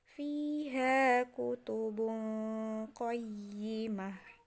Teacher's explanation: ketika kita baca bukan lagi jadi tu, tapi menjadi ha